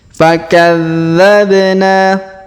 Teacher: huruf dza kita tahan dan kita tekan karena terdapat tanda tasdid fakadzabna huruf ba kita pantulkan atau kita qalqalahkan ya karena berharakat